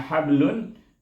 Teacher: Tapi apabila kita sambung dengan hablun, jadi lantunan itu bunyi perlahan. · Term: qalqalah sughra